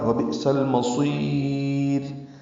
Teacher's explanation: وبئس المصیر میں حمزہ ساکن جھٹکے سے ادا ہوگا. وبئس سین کو المصیر کے لام سے ملا دیں گے، اظہار قمری ہوگا.